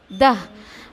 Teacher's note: अच्छा देखिए ये ता है, गोल ता है, मैं रुक रही हूँ तो हा की आवाज़ आएगी। अब हा की आवाज़ नहीं निकालोगे तो अलिफ में बदल जाएगा, बात आ रही समझें।